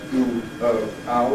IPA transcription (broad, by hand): uː, əʊ, aʊ